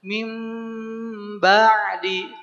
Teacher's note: karena dia pakai gunah rasakan ke roga hidung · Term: gunnah